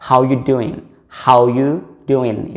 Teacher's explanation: Say for example, in this phrase, how are you doing will be said, or it will be pronounced how you doing without the voice of R